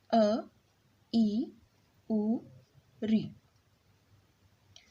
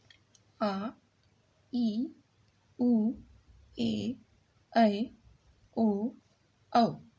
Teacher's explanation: जिन स्वरों के उच्चारण में ह्रस्व स्वर के उच्चारण से 2 गुना समय लगता है वो क्या कहलाते हैं? दीर्घ स्वर कहलाते हैं।